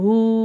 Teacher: ஹா மேல வந்து சின்ன மது வருது மூணுல இருந்து நாலு அலிப் வரைக்கும் நம்ம நல்லா நீட்டி ஊதணும்